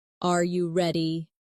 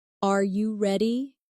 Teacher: the pitch of their voice goes up at the end.